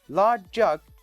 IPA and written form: lɑːʤ ʤʌg (large jug)